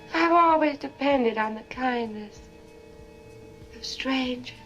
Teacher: you hear how there's no R in strangers strange strange strange that's a non Ric accent but that's change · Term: non-rhotic accent